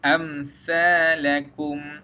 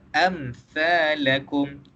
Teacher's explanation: bila kita sebut mim tersebut, kita kena sebut mim tersebut dengan jelas. Itu yang pertama. Dan yang kedua, kita tak boleh dengungkan dia. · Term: izhar syafawi